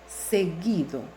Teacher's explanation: Vemos que la U no tiene sonido, por lo tanto esta U funciona como grafema, no como fonema, y al no tener sonido no forma diptongo.